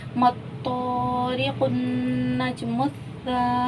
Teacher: अलिफ खाली उससे पहले ज़बर है तो अलिफ मद्दा हुआ। इसे हम एक अलिफ की मिक़दार खींचेंगे।